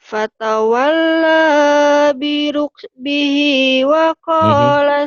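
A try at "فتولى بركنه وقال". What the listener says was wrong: Fatawalla biruknihi, bukan birukbihi ya. Nun atau neng.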